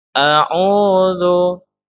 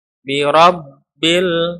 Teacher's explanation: A'udzu, ini huruf zal, bi rabbil, alif lam al qamariyah ya, ro-nya ro tafkhim, ro dibaca tebal karena ro di baris fathah.